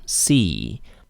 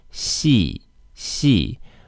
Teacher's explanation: if you push the tongue against the hard palate then it becomes shi shi which is very similar to the x sound in chinese